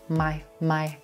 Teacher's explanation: our lips come together for the M consonant into the white tie I vowel